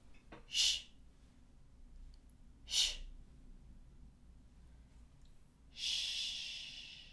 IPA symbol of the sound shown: ʃ